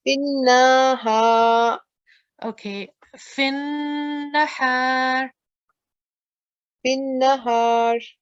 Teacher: we have to make it strong with 2-second nasal sound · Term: huruf gunna